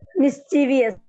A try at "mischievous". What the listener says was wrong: Yeah, നമ്മൾ എല്ലാവരും അതിനെ മിസ്ചീവിയസ് എന്നാണ് പറയുന്നത്, ബട്ട് ഇറ്റ്സ് ആക്ച്വലി മിസ്ചിവസ്. ആ ബി കഴിഞ്ഞിട്ട് ശരിക്കും ഐ ഇല്ല. മിസ്ചീവിയസ് എന്ന് വായിക്കേണ്ട ആവശ്യം ഇല്ല. ഇറ്റ്സ് മിസ്ചിവസ്. മിസ്ചീ സൗണ്ട് അവിടെ ഇല്ല ആക്ച്വലി. ഇറ്റ്സ് മിസ്ചിവസ്.